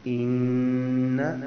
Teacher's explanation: یہاں پہ نون پہ شد ہے، غنہ سا کریں گے. اور بعض لوگ یہاں پر انا پڑھ دیتے ہیں، انا نہیں ہے، الف نہیں ہے ساتھ اس کے، بلکہ صرف انا ہے.